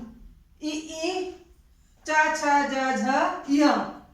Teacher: तो आपके ये जो वर्ण है ई, च, छ, ज, झ, य और आपका य और श, ये आपके तालु के द्वारा बोले जाते हैं। तालु जो मुख के अंदर तालु है, जैसे जीभ ऊपर जाती है, तुरंत जिब्या के ऊपर जो होता है वो आपका तालव्य कहलाता है। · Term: तालव्य वर्ण